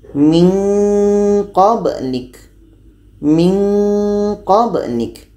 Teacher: Karena qa dan ka ini letaknya pada pangkal lidah, maka nanti akan menghasilkan dua-duanya untuk qa dan ka ini bunyi nge.